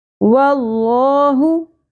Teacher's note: لفظ اللہ کا لام پور پڑھا جائے گا کیونکہ اس لام سے پہلے جو حرف ہے اس کے اوپر زبر ہے